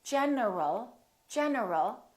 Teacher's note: my tongue is moving for the N and it's moving for the L so when I say in general my tongue moved three times